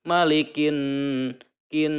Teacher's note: kin ada menahan dengungan itu ya selama 2 atau 3 harokat. · Apabila nun yang bertasdid ini membacanya harus mendengung dan ditahan dengungannya itu 2 atau 3 harokat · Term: gunnah